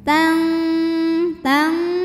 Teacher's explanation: Tang ada hukum ikhfa ab'ad karena nun sukun menghadapi huruf kaf. Maka nunnya disamarkan menuju kaf disertai dengung dan dengungnya besar.